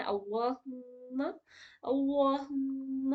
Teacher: میم میں غنہ کرنا ہے، کیونکہ دیکھیے گا میم کے اوپر تشدید ہے